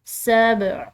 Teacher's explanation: عین حلق سے ادا کریں گے